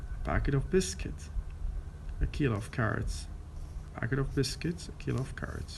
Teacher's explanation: The last column, which has the stress pattern weak, strong, weak, weak, strong, weak